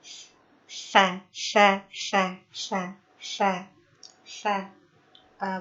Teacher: Huruf tha keluar dari ujung lisan yang bertemu dengan ujung gigi seri atas. Dan hampir keluar gitu si lisannya, ujung lisannya tuh.